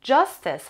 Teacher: justice has two syllables and the stress is on the first syllable.